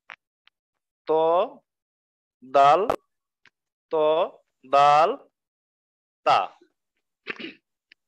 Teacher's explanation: পিঠ তার বরাবর উপরের তালুর সাথে লাগাইয়া র, এগারো নম্বর মাখরাজ জিব্বার আগা সামনের উপরের দুই দাঁতের গোড়ার সাথে লাগাইয়া